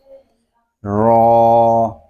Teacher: یہ حرف جو ہے یہ زبان کی نوک اور مقابل کے تالو سے ادا ہوتا ہے، یعنی جہاں اوپر والے دانت اگے جہاں سے ہمارا تالو شروع ہوتا ہے وہاں سے ہی یہ حرف ادا ہوتا ہے۔